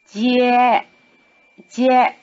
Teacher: In this word, both syllables begin with the tongue in the forward position, the so-called palatal position